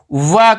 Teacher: व बोलते समय हम दांत और ओंठ का इस्तेमाल करते हैं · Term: दंत्योष्ठ